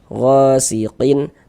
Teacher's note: Sini gha dibaca panjang. Mad tabi'i panjang 2 harokat.